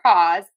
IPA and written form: kɔz (CAWS)